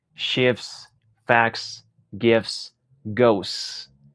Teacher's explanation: este truco te va a facilitar la vida y es simplemente omitir la t